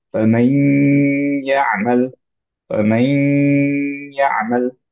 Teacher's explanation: তো আমরা এটাকে পড়ি হচ্ছে এইভাবে, যদিও সাদ্দা দেখা যাচ্ছে না, কিন্তু আমরা জানি যে নুনের যে গুন্নাটা এটা ট্রান্সফার্ড হবে ইয়াতে, এর জন্য আমরা পড়বো হচ্ছে এইভাবে فمن يعمل فمن يعمل। ওকে, একটা গুণনা সহ ইয়াটা উচ্চারণ করব। অ্যান্ড হচ্ছে যদি নেজাল ক্যাভিটি দিয়ে আমরা সাউন্ডটা বের নাও করতে পারি, অ্যাট লিস্ট আমাদের এটুকু খেয়াল রাখতে হবে যে আমরা এইটুকু ধরে রাখছি 2 কাউন্ট।